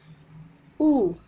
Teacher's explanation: உன்னும் எழுத்தை ஒலிக்கும் போது இதழ் குவிகின்றன இதழ் அப்படின்னா நம்மளுடைய உதடு பகுதி வந்து உ அப்படின்னு சொல்லும்போது பார்த்தீங்கன்னா இதழ்